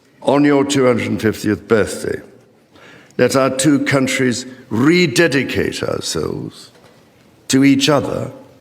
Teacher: King Charles rolled the R only at the end when he says rededicate. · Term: rolled R